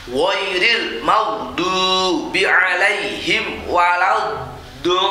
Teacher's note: Ini mat lazim kilmi musaqqal namanya. Panjang sekali itu. Panjangnya 3 alif atau 6 harokat.